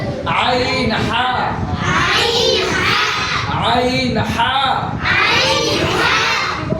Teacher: হলকের মধ্যখান হইতে আইন হা।